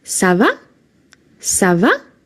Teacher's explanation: So here you can hear that because it's a question the intonation at the end the tone of your voice goes up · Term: intonation up